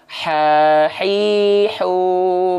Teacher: Kalau ha kecil tengah tenggorokan dilafalkan tepat dari tengah tenggorokan